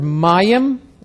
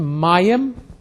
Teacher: mayim, accent on the front end